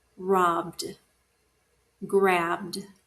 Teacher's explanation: B, it's voiced. Here's the ED, the B is in front, so it's voiced, so we're going to say D at the end.